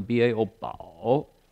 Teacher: that's a third tone, falling and rising.